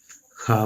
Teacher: खा बोलेंगे तो आवाज गले से निकलेगी और जीभ मुख के हिस्से से टकराएगी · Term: व्यंजन